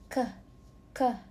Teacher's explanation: k is a velar sound because it's produced in the back of the mouth, near the volume.